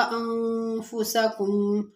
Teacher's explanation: انفسکم میں نون ساکن، اس کے بعد حروف اخفا کے 15 حروفوں میں سے فا ہے تو یہاں پر اخفا مال غنہ ہوگا